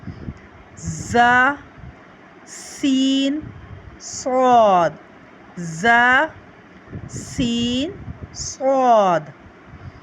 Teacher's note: जुबान की नोक और दोनों दांतों के अंदरूनी किनारे से इसे हम अदा करते हैं · زبان کی نوک اور دونوں دانتوں کے اندرونی کنارے سے اسے ہم ادا کرتے ہیں